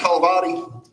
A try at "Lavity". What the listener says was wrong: Throw the H out, Lavity.